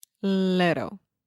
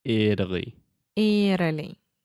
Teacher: that is what we call a flap T so I'm not really articulating that t sound I'm not saying little I'm saying little little yeah very similar